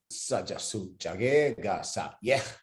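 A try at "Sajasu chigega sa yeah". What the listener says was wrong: That was a long A. Sa yeah.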